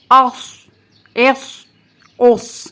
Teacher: اس میں سیٹی کی آواز بھی آئے گی، لیکن اس کو ہم نے سین سے نہیں ملانا